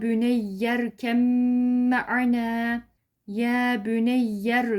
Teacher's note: şurada hafif bir gunne yapıyoruz genzimize Ses veriyoruz arkadaşlar